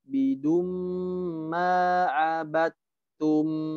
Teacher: Abidum idgham bi gunnah ditahan 3 harokat